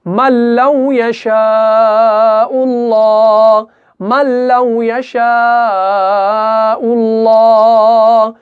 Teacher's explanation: हम यहां पे मल्लौ जल्दी से अदा कर रहे हैं। हम यहां पे मल्लौ ऐसे नहीं पढ़ सकते, हम लाम को नहीं खींच सकते। लाम और रॉ जो है इस सूरत में क्या होगा, इदगाम बगैर गुन्ना के होगा, यानी इदगाम कामिल होगा।